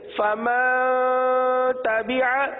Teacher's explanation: نون ساکن کے بعد تا حروف اخفا میں سے ہے اس لیے یہاں پر اخفا کا قاعدہ ہوگا، لہذا اخفا یعنی غنہ کریں گے. غنہ کی مقدار 1 الف کے برابر ہے، غنہ کی مقدار 1 الف کے برابر ہے.